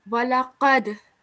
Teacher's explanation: it is a kalkala letter, and you have to give a jerk to this dal